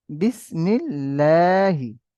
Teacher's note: মিমের নিচে জের এসছে যেটা হলো হারাকাত, হারাকাতের পরে তাড়াতাড়ি পড়তে হয়, ঠান্ডা নিষেধ। আল্লাহ লাম মুসাদ্দাদের পূর্বে জের এসেছে, তাই আল্লাহ লামকে বারিক অর্থাৎ লা করে পড়তে হবে